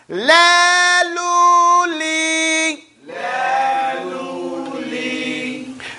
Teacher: Just as a point, I want to remind you, the lam does not come from the tip of the tongue like it does in English. In the Arabic language, the lam comes from the side of the tongue up to the right and very light.